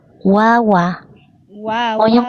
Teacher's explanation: Wawa waai [Musik] dengungkan. Bukan cuman ditahan tapi dia dengung. Alaihim. Rasakan dia suaranya masuk ke hidung.